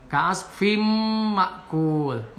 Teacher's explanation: Kemudian ka'asfim ini idgham bigunah. Jadi tanwin menghadapi mim, dibaca memasukkan tanwin kepada huruf mim dan pakai gunah.